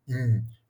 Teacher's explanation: é como se a gente tivesse um é nasalizado e encontrando com uma semivogal I